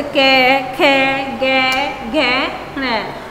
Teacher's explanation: तो सबसे पहले हम चर्चा करेंगे कंठ पर। इनके उच्चारण में जीभ का पिछला भाग, जो हमारी जीभ है उसका पिछला भाग किसको स्पर्श करेगा? हमारे गले को स्पर्श करेगा। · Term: कंठ वर्ण